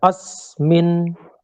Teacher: आगे सकार और मकार का संयोग है, इसलिए अ पे थोड़ा दबाव देके बोला जा रहा है